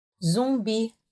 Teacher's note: do you hear that nasally sound coming through there